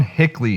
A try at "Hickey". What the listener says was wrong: Ryan Hickey. I think it's Hickey. There's no L. It's not Hickley. Hickey. There's no L. Hickey.